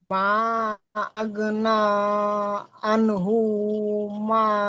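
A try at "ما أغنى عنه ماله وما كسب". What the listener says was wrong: হুতে টান নেই, দেখেন, আনহু টান নেই, আনহু টান নেই।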